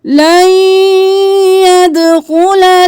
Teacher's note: دال کو قلقلہ کریں، کیونکہ دال ساکن ہے تو آواز پلٹ کے واپس آنی چاہیے۔